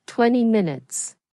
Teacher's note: In fast natural speech, people often drop the second T and say 20. So 20 minutes becomes 20 minutes.